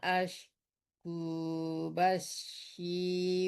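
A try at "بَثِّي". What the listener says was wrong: Jangan basi tapi bathi di ujung lidah dan ujung gigi atas. Bathi.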